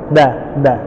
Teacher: Kayak orang Bali ya, da. Nah, jadi lidahnya ujungnya nempel ke gigi seri atas